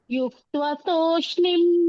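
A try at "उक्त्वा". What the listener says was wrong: ಯುಕ್ತ್ವ ಅಲ್ವಾ, ಉಕ್ತ್ವ ಯು ಅಲ್ಲ ಅದು ಉ. ಯು ಅಲ್ಲ ಮಾತಾಜಿ ಉ. ಯೋಕ್ತ್ವ ಅಲ್ಲ ಅದು ಉ ಮಾತಾಜಿ. ಉಕ್ತ್ವ ಅದು.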